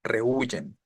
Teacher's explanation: tengo dos vocales consecutivas la e y la u e es fuerte u es débil la tónica es la débil